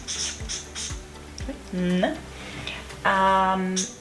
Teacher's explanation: Right, the phoneme N consonant. So that we've got the place of articulation, N alveolar. Then we've got the manner of articulation, nasal, N. Third one is linis, and obviously it's voiced.